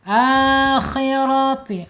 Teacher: Tebalkan ya. Akhirati rnya tebal ya karena harakatnya fathah ya